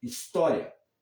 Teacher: em português, dizemos história, é a segunda sílaba, a sílaba tônica.